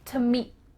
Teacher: your tongue is going to be at the top of your mouth, ready to make the T sound, but no air comes out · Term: final T sound